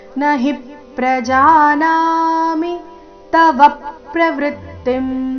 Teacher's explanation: ನಹಿ ನ ಹಿ ಎರಡು ಅಕ್ಷರ ರಸ್ವ ಹಿ ಮೇಲೆ ಆಘಾತ